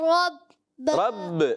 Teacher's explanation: اچھا با میں کلکلا کرنا ہے, مشدد کلکلا کرنا ہے